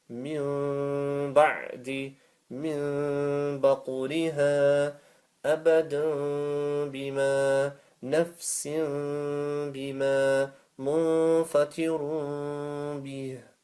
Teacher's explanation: change the noon sakin and tanween for a meme and lengthen for 1 second with nasal sound. The lengthening for 1 second with the nasal sound, you can say and make ghunna. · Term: iqlab